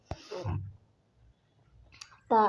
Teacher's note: हमारा ता अघोष अल्प प्राण है